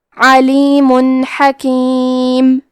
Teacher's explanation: کلمت حکیم ہا حروف الاظہار میں سے ہے، اظہار کا معنی ہے ظاہر کرنا اور کیونکہ تنوین کی اصلیت نون ساکن ہے تو ہم یہاں تنوین ظاہر کریں گے اور اسے نون ساکن پڑھیں گے اور بغیر غنہ سے یہ حکم کو ادا کریں گے